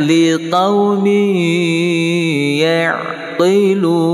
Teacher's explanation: Tanwin di bawah mim bertemu dengan ya, hukumnya idgham ma'al gunnah atau idgham bi gunnah, berdengung 2 harakah.